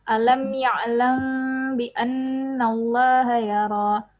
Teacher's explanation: Jadi agak didengung dia 2 sampai 3 harakat